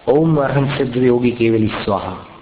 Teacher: योगी में गी ह्रस्व रखेगा और केवली में ई दीर्घ है, योगी में ई की मात्रा ह्रस्व है, अपने हाथ के बाईं तरफ जाएगी, और केवली में दीर्घ है और अंत में स्वाहा है।